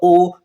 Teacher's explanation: तो ओ में क्या देख रहे हैं कि कंठ से भी और ओठ से भी। सबसे पहले आप ध्यान रखिएगा कि जब ओ बोलते हैं तो ओठ की बनावट मीन्स ओठ जो यहाँ पर वो आपका वृत्त मुखी हो जाता है।